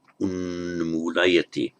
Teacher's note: And by sandhi, this t before a m becomes an n, which is why we have this form unmulayati.